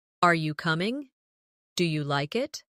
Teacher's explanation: Another important element is intonation when asking questions. In English, our voice usually rises at the end of a yes or no question. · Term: rising tone